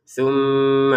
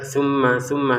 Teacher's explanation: ini mim bertasydid harus kita dungkan dulu